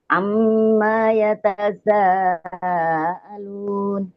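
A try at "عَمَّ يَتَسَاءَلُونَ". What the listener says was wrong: Itu mimnya kan nggak ada alifnya, nggak ada huruf mad. Jangan dibaca amma, jangan.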